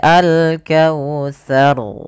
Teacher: huruf ro ra memiliki sifat yaitu sifat takrirnya takrir yaitu pengulangan di dalam huruf ro tapi di sini Hanya Sekali saja pengurangannya tidak boleh banyak misalnya alkautar tar ahah ini enggak boleh